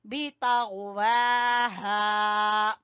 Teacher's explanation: वजह से खींचेंगे। सामूद बितगवाहा, बितगवाहा, तो को पुर पढ़ते हुए गैन का मखरज सबसे हलक के ऊपर वाले हिस्से से गैन अदा होगा